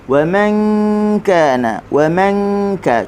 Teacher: Wa man kana, tanwin bertemu dengan kaf, hukumnya ikhfa. Ikhfa nun perlu kita sembunyikan huruf nun daripada jelas disebut di makhrajnya